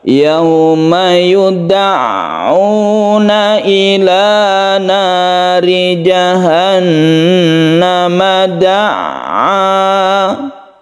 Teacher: Ini harus perlu latihan untuk tasydid ain. Jadi tasydid ain itu ditekan ke ainnya, karena dia itu bersifat tawassut, maka kita tidak boleh terlalu menekannya.